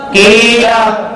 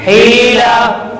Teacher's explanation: یا سے پہلے زیر ہے, یا مدہ ہو رہا ہے, اس کو ایک الف کی مقدار کھینچ کر پڑھیں گے